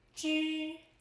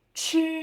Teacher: Zh. No puff of air. Ch. Strong puff of air. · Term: aspiration